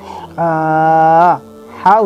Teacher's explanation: হা উচ্চারণ হবে কণ্ঠনালীর ভেতর থেকে